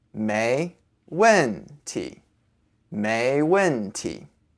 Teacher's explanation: you can say the last character with a neutral tone